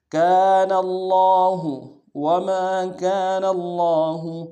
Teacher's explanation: وما كان اللہ، وما، واو کو نون سے ادا کریں گے، میم کے ساتھ الف مدہ ایک مقدار میں کھینچیں گے، نون کے ساتھ الف مدہ، کاف کے ساتھ الف مدہ، اس کو بھی ایک مقدار میں کھینچیں گے، نون کو لفظ اللہ کے لام کے سامنے لانا ہے، تشدید ہے، زور دیں گے، کھڑا زبر ہے، لام کے اوپر ایک مقدار میں کھینچیں گے، ہا کو نرمی سے ادا کریں گے.